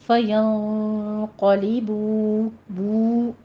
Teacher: یہ واو مدہ ہے، دونوں ہونٹوں کو گول کیجئے، 2 کاؤنٹ کرنا ہے